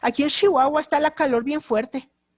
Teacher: Dicen ellos, aquí en Chihuahua está la calor bien fuerte. Entonces en Chihuahua hablan de esa manera, lo pronuncian la che como si fuera una S y una H.